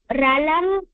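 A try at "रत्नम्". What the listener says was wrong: அது ரலம் இல்ல ரத்னம் रत्नं रत्ने रल இல்ல रत्नं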